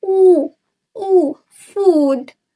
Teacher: Lalu ada u pada food. Lidah tinggi di belakang dan bibir membulat.